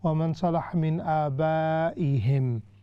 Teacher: Secondly, both of you, when you try to stop wa man salaha min abaihim, you stopped like wa min aba. You left the hamza out. But hamza is part of aba. So if you want to stop, the best way to do is وَمَنْ صَلَحَ مِنْ آبَائِهِمْ, like that.